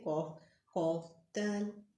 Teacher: दाल पे फ़ौरन ज़ुबान आपकी सामने के दांतों की जड़ से लगे। सामने के 2 दांत है।